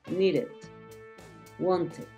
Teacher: esa Ed ya está un poco más separada que no está pegada entonces suena más needed Wanted suena más que un solamente golpe